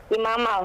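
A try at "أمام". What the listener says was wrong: Amama. Nah, kalau imam lain lagi. Amama, ini pakai a. Amama. Nah, khalfa di belakang, amama di amama. Mimnya panjang. Mimnya yang pertama panjang.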